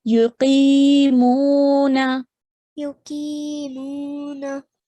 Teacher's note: the qi and the mu are stretched for the same amount of time, 2 seconds